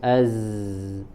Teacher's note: Kemudian az itu bergetar pita suaranya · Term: al-jahru